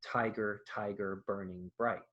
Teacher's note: It just starts on a stressed syllable instead of an unstressed syllable. · a trochaic line, stressed, unstressed,